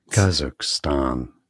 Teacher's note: So that's a stress on the first syllable.